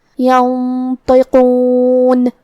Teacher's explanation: حرف القاف کی ادائیگی زبان کی جڑ اور تالو کے نرم حصے سے ہے · ہم یہ غنہ کو اور حرف الطا کو دونوں کو تفخیم سے مطلب بھاری آواز میں پڑھیں گے